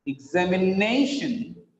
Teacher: TION is the last syllable. The previous syllable, the penultimate syllable is stressed.